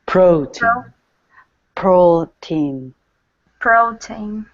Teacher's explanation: And the stressed syllable is in Pro. · first syllable is going to be loud, second syllable is soft